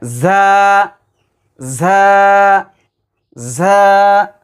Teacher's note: জিহ্বার আগা সামনে নিচের 2 দাঁতের আগার দিকে লাগায়